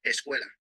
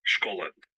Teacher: sometimes the diphthong ue in Spanish corresponds to the open O in Portuguese.